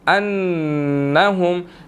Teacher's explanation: نون مشدد ہے، یہاں پر غنہ ہوگا